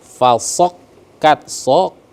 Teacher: Fasokkat ya, mampir dulu huruf kafnya karena ada tasdid. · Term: kaf tasdid